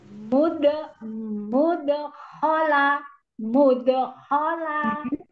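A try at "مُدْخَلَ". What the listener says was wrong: Lagi ngambil khonya jangan lama-lama. Jadi ngambil khonya nggak boleh khola. Itu terlalu lama mengambilnya.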